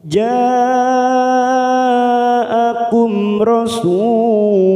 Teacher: mim sukun bertemu ro Idhar syafawi kita baca jelas tanpa mendengung